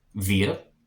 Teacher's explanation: the W makes a V sound in German